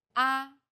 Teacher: the first tone is steady with a high pitch